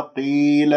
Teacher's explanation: قاف مكسورة مفخمة مرتبة خامسة